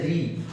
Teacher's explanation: मूर्धन्य मतलब मूर्धा से जो बोला जाता है, जैसे री, आपका जो जीभ है जाके क्या मूर्धा में टकरा रही है और री और रगड़ खा रही है, रगड़ खाने के बाद वाइब्रेट होकर आवाज निकल रही है, ठीक है ना?